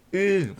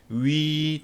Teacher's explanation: 평평하게 펴지는게 평순모음. 위 동그랗게 말리는게 원순